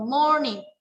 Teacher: Ustazah tekannya di mana? Di more-nya itu. Nah, di more-nya, di awalnya, di morning. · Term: stress word